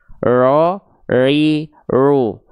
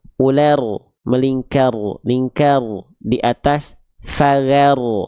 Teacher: Enggak boleh betul-betul hilang dan juga enggak boleh betul-betul ee terlampau berlebihan. Ro, ri, ru tetap ada getarannya, tapi bukan dengan getaran yang kita maksud seperti huruf R pada abjad alfabet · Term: takrir